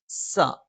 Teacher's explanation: നാവിന്റെ കൂർത്ത അറ്റത്തിന്റെ മുകൾഭാഗം രണ്ടു വരി മുൻപല്ലുകൾക്കിടയിൽ പിന്നിലായിട്ട് നിൽക്കുകയും നാവിന്റെ അറ്റം താഴെ മുൻപല്ലിന്റെ പള്ളയിൽ സ്പർശിക്കുകയും ചെയ്യും